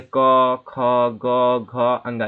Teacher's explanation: तो का वर्ग जो है ये कंठ से निकलता है, यानी कि हमारे कंठ से ये आवाज आती है, इनके सारे ध्वनि जितने भी अक्षर हैं, जैसे क, ख, ग, घ, अंगा, ये सब कहाँ से निकले, हमारे कंठ से आवाज निकलते हैं।